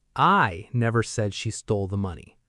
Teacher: Stress on I. This means someone said it, but it was not me.